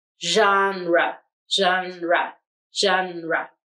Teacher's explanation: syllable will have g-e-n here the g will make the sh the second syllable we have r e where the e will make the schwa sound